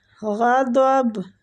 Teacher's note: با کو ہم ساکن کر رہے ہیں اس لیے ہم اس پہ قلقلہ کر رہے ہیں